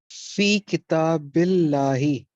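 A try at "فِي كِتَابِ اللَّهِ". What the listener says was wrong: माशाल्लाह, बिल्कुल सही है, एक्सेलेंट।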